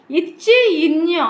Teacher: இடை நா இடை அன்னத்தோடு பொருந்தி இருக்கும் நிலையில் பிறக்கின்றன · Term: வளை நா ஒலிகள்